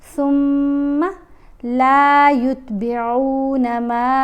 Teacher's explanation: میم کے اوپر مد ہے، اس مد کو ہم نے 3 الف جتنا لمبا پڑھنا ہے۔